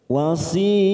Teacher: wasid wasid Mad Arif Dar sukun empat harakat kita panjangkan kan ujungnya jangan lupa dipantulkan karena ada huruf Dal namanya qolqala Kubro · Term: qalqala kubra